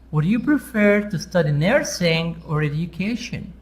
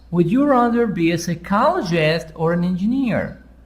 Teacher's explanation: So here, before or, sound is up. After or, sound is down. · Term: intonation